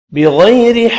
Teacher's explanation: را باریک پڑھیں گے زیر کی وجہ سے۔ وقف کرنے کی صورت میں قاف ساکن ہوگا، قلقلہ کریں گے، ملانے کی صورت میں ادغام مع الغنہ ہوگا۔